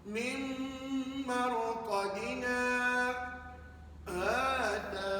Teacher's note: 2 harakat untuk mad asli. Nah, ni mad asli. Kemudian 2 harakat seterusnya baru kita buat saktah.